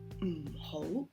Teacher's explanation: good it's it's just a symbol you add a negative before just close your mouth and it's a very low tone so you say at the negative in front of ho it